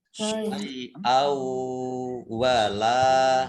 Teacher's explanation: lam fathah alif mat tabi'i panjang 2 harokat